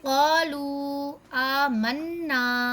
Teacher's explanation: مد منفصل کا یہ رول ہے یا یہ قاعدہ ہے کہ اگر الف مد یا مد واو مد پر ایک لفظ ختم ہو اور دوسرا لفظ حمزہ سے شروع ہو تو ہم اسے 2 الف 5 الف یا 6 الف کے برابر بھی کھینچ کر پڑھتے ہیں